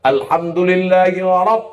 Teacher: ra-nya tebal. Bukan ra, tafkhim, tebal.